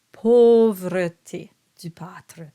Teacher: So here we have the example of the AU sound that is the closed O sound.